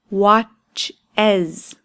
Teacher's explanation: It's that iz sound at the end. Why? because it ends with a ch sound.